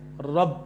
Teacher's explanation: عرب لوگ کہتے ہیں رب، تو رو کو موٹا کرتے ہیں